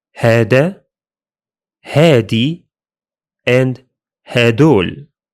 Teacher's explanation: In the Levant dialects, that ذال sound changes to d, giving us هذا, هادي, and هدول.